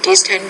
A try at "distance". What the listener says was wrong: Again, distance. You're not pronouncing that final S.